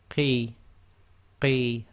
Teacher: blocking the throat before you make the sound and then letting the sound out. Qi, again that's not necessarily completely full mouth.